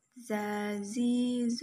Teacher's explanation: Sifat lain huruf za ini berkarakter khas dengan suara mendengung tawon